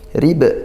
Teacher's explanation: Sukun dan diwakafkan maka Qalqalah Kubro dibaca pantulan kuat